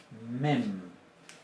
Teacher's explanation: Mem, la mem, nasal bilabial sonora. Mem. es una M.